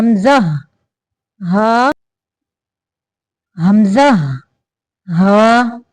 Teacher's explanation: हलक के आखरी हिस्सा से जो सीने की तरफ है यानी हलक का वह हिस्सा जो सीने की तरफ है वहां से हमजा हा निकलते हैं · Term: रूफे हलक, हरूफ हल्किया